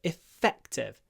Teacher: So we hold the f, we do a little pause, and then ktiv.